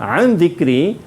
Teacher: hukum dia ikhfa hakiki dan bacaan dia cara bacanya adalah bacaan dengung